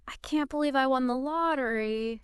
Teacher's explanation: Like stressing believe and lottery. It emphasizes your excitement.